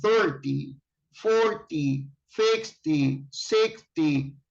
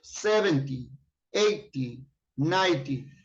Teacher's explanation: you say T, and the stress syllable is at the beginning